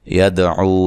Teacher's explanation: یدعو دال پہ قلقلہ کرنا ہے